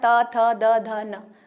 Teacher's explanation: त वर्ग जो होता है दांत से बोला जाता है